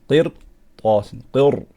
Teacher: Make sure you bring the back of your tongue up and make your ra strong